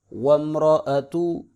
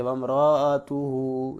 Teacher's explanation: لوگ را کو لمبا کرتے ہیں، جیسے وامرأتوہو، یہ غلط ہے، را کو لمبا نہیں کریں گے کیونکہ را کے اوپر صرف زبر ہے اور حمزہ کے اوپر اپنی زبر ہے۔